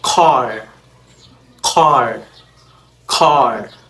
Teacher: and next we have the retracted allophones so first we have the K retracted before back vowels